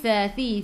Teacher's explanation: hujung lidah keluar pada gigi depan